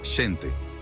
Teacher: el sonido sh representado por la x cambió al sonido de la J